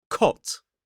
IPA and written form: kɒt (Cot)